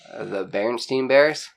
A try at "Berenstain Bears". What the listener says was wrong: It's not Berenstein. Berenstain. Berenstain Bears. Everybody thinks it's Berenstein.